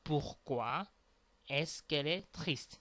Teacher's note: the E of que will disappear, and you will add this comma in order to make the liaison between que and L, which will become quelle.